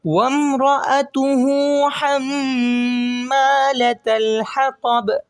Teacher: وامرأته، اس کا جو الٹا پیش ہے ہا کا، اس کو ایک الف کی مقدار میں کھینچ کے پڑھیں گے۔